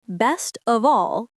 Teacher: For example, the phrase best of all sounds like best of all. The T disappears because the next sound is soft.